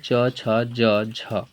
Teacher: ता का अर्थ हुआ तालु, तालु से बोला जाता है